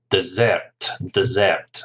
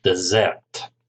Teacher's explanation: remember the pronunciation stress on the second syllable